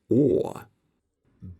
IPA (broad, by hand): oː